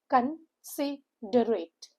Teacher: The stress is given on the second syllable, which is sit.